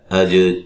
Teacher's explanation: جیم پہ قلقلہ کرنا ہے، اور را کو موٹا ادا کرنا ہے